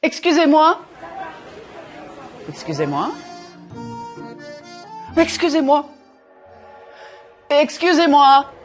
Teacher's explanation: Even though I varied the intonation to convey different meanings, I never punched the words too much. I didn't use a very wide range of pitch either.